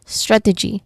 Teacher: the primary stress is on the first syllable strat.